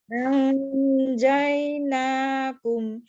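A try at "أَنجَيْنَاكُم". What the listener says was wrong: Nah, posisinya tuh bukan di nun, tapi posisinya itu mau ke ja, Bu. Gitu.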